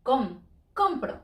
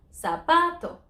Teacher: Because it ends in a vowel, so we don't stress the last syllable. Compro. We stress next to last.